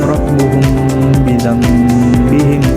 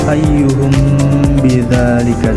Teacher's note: Nah, di sini hukum ikhfa syafawinya itu terdapat pada kata ayyuhum tadi, mim mati itu ditekankan mimnya selama 3 harokat